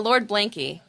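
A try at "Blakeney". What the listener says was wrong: Blanky? It's not. He's got like an extra syllable in there. I know he has an extra syllable in there.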